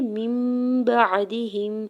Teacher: ساتھ ملاتے ہوئے یہاں پہ اقلاب کا قاعدہ ہو رہا ہے، نون ساکن کی آواز کو میم میں بدل کے پڑھیں گے